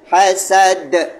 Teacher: Maka kita matikan dengan qalqalah pada huruf dal tu tadi